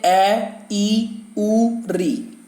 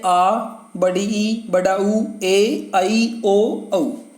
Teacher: दीर्घ स्वरों के उच्चारण में ह्रस्व से दुगना समय लगता है।